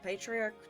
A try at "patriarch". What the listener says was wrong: you said matriarch again